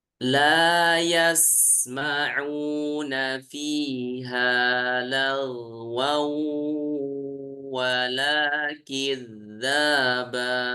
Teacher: Kita memasukkan bunyi tanwin ke huruf wawu disertai dengung. Ya, Ya, dan itu dengan tempo gunnah yang dipanjangkan. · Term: idgham bi gunnah